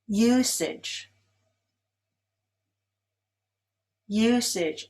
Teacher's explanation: Usage is stressed on the first syllable.